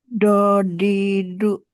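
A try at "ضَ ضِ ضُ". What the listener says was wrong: Itu masih pakai ujung lidah tuh ya. ujung lidahnya jangan dikenain ke Jadi dia nggak diam aja di situ, tapi agak. Kalau Bunda pakai yang kanan ya, ya dia agak menyamping dikit.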